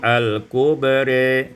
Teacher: al-kubra imalatu fathatir ra wal alif, dibaca imalah fathah ra dan alif, menjadi al-kubri.